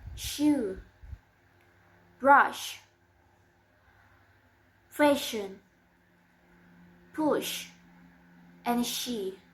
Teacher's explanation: Sh. It's voiceless, and the place of articulation is post-alveolar, and the manner of articulation is fricative.